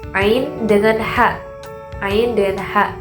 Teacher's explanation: Ain dan ha, yaitu terletak di tenggorokan tapi di bagian tengah. Jadi di atas hamzah, di atas pangkal tenggorokan, di atas si hamzah dengan pengucapan hamzah dengan ha itu naik sedikit ada pengucapan ain dengan ha.